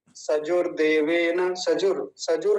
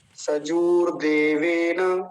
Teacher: जकार पर दीर्घ उकार है बड़े उ की मात्रा है तो लंबा खींच के बोलना है